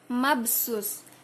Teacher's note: Itu adalah qalqalah sugro karena di dalam kalimatnya terdapat huruf ba mati. Cara membacanya cukup dengan membalikkan membentuk huruf ba.